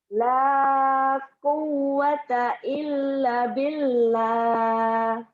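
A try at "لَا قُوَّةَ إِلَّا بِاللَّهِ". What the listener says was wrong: Lanya panjang. Illa billah. Lagi.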